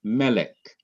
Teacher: Now notice that the accent is on the syllable before the last syllable. · ordinarily the last syllable would be accented, but it is not accented in melech.